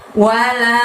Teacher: Wa-nya pendek, la-nya panjangnya 5.